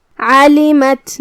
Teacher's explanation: حرف العین کو ہم حلق کے درمیان والے حصے سے ادا کریں گے. لام کے نیچے زیر ہے تو ہمیں لام کو زیر سے ادا کرنا ہے اور اسے ظاہر کرنا ہے.